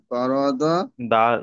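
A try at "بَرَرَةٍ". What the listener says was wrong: নয়, ওখানে ডবল র আছে। ডবল র আছে, বা যাবার বা। র যাবার র, র যাবার র, তা দুজের তিন।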